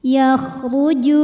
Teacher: huruf ro dibunyikan secara tafkhim karena berbaris damah maka dibacanya tebal yakhuju Ju dihukumi dengan mad thi'i dahiri karena ada wau sukun